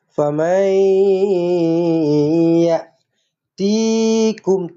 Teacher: Masukkan dekat ya. Masukkan dekat ya, senyum, dengungkan 2 harakat.